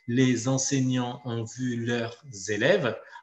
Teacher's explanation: Donc là, vous voyez que chacune des syllabes est séparée et donc elles doivent être plus ou moins égales en temps et juste la dernière sera un peu plus longue.